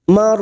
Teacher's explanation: huruf ro sukun yang sebelumnya fathah kita baca tafkim